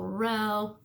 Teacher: Our lips are coming together to make that ooh sound, and that's a little trickier. So we want to try and keep that smile, keep those muscles engaged to get the read.